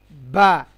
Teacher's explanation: ঠিক একইভাবে বা, দুই ঠোঁট দুই ঠোঁটের ভেজা অংশ একদম যুক্ত হয়ে যাবে, মিলে যাবে একটি আরেকটির সঙ্গে।